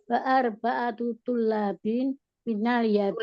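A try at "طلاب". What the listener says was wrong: Tulabin, lamnya panjang. Tulabin.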